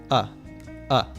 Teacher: of often reduces to just a schwa sound